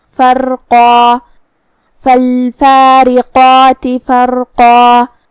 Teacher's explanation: کلمت فرقہ میں یہاں بھی را کا حکم ہے تفخیم. ہم حرف را کو بھاری آواز میں پڑھیں گے، پھر قاف کو اور مد الف کو بھی بھاری آواز میں پڑھیں گے